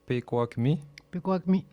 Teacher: il faut que je fasse attention pour pas dire mes K en G